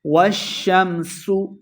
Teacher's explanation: سین پہ سیٹی کے آواز آئے گی